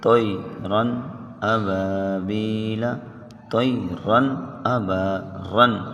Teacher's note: نون ساکن یا تنوین کی آواز کو ظاہر کر کے پڑھیں گے